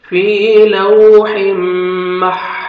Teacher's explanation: فی لوح، تنوین کے بعد حروف یرملون میں سے میم ہے، ادغام کریں گے غنہ کے ساتھ، نوز میں ساؤنڈ لے کے جائیں گے ، فی لوح مح، حا کو اپنے صحیح مخرج سے ادا